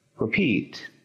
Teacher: Encontramos el acento en la segunda sílaba.